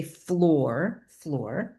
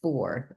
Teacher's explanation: I'm taking out the second sound within that initial blend.